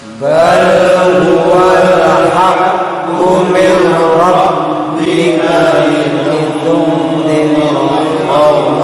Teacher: Jadi dengungan itu sampai minimal rongga hidung kita itu bergetar yang agak lama. Jangan langsung dilepaskan yang agak lama.